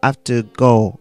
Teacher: i usually drop the h when it's i have to